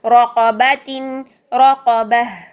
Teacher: را قا دونوں موٹے ہیں، را قا دونوں کو موٹا کرنا ہے اور با کو موٹا نہیں کرنا، بو نہیں با. · ہا ساکن کی آواز لاسٹ میں لازمی آئے